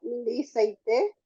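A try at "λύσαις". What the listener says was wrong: te ves que el acento está sobre la Y, entonces sería lisais.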